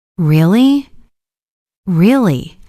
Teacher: really rising tone shows surprise or interest. Really falling tone shows confirmation or seriousness.